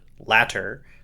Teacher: saying latter as in the opposite of former in quick speech also uses the flap